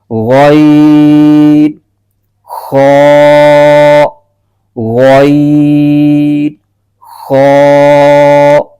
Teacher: हलक का ऊपर वाला हिस्सा यहां से भी दो हरफ अदा होते हैं